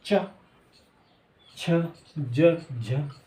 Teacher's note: यानी कि जीभ जो है तालु को टच करेगी ऊपर, तो यानी कि बोल दो च, छ, ज, झ, चलिए वाले, ट, ठ, ड, ड।